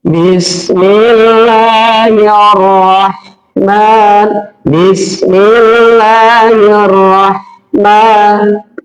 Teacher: fathah berdiri seperti itu hukumnya adalah mad tabi'i, panjangnya dua harokat